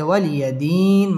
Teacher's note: ওয়াও ঠোঁট গোল করে উচ্চারণ করতে হবে